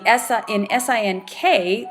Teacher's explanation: What happens is that if a single letter N grapheme is followed by the K, then the phonology, the sound we make, is that ing, like is in sing